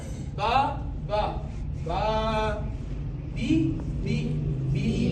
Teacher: ایک الف یعنی 2 حرکات کے برابر کھینچ کر پڑھیں گے